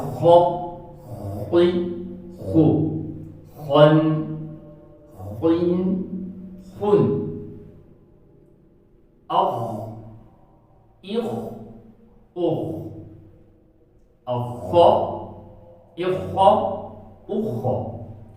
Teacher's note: तो जी खौ का मखरज तो हमने सीख लिया कि ये गले के जो ऊपर वाला हिस्सा है जो इधर मुंह के साथ मिला होता है वहां से खौ अदा होता है